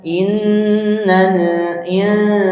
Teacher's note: Sin itu makharjul hurufnya ada di gusi bagian bawah. Lidah tidak ke mana-mana, tidak mengangkat. Bibir tidak bergerak ke depan.